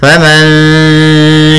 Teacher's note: kita menyamarkan suara nun ke huruf shin di antara bacaan izhar dan dengan idgham. Izhar itu jelas nunnya, idgham itu memasukkan nunnya kepada huruf setelahnya, sehingga ada yang hilang secara sempurna, ada yang tidak secara sempurna, sehingga kita samarkan langsung ke huruf shin. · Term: ikhfa hakiki